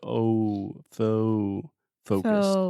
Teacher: you really want to start with the oh and then move that into a you